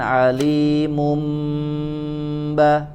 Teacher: maka juga ada tambahan gunnah ya, harus ditahan dulu. Innallaha bikulli syai'in alimum ba, jangan langsung alimum baro ya. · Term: hukum iqlab